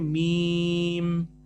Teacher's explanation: جب آپ بولیں گے نا میم تو آپ کے دونوں ہونٹ ملیں گے